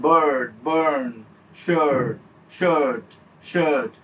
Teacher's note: র মনে হচ্ছে উচ্চারণ হচ্ছে কিন্তু রটাকে আমি কিন্তু উচ্চারণ করছি না